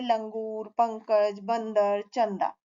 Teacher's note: अनुस्वार का उच्चारण नाक से किया जाता है